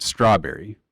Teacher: it would be a stress followed by an unstress and an unstress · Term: dactylic